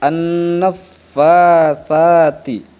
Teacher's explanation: Pada kalimat an-naffatsati, di situ ada huruf sa. Huruf sa ini dibaca di ujung lidah dirapatkan dengan gigi atas